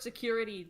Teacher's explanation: the word security the emphasis is on the second syllable